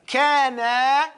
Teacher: You drag that alif a little bit to make it clear that you're talking about alif al-thnain.